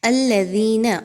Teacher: دال زیر یادی یا مدہ کو آپ نے 2 الف کے برابر کھینچ کے لمبا کر کے پڑھنا ہے